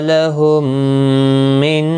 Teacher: میم ساکن کے بعد دوسرا میم آیا ہے، یہاں پر ادغام شفوی ہوگا، گنہ کے ساتھ پڑھیں گے